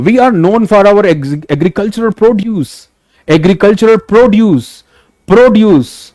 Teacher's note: अब I think इतने example से आपको बात समझ आ गई कि इन बाइसिलेबिक words, if that word is being used as in verb, the focus stress will be on the latter syllable, and if that bisyllabic word is being used as noun, the stress is on first syllable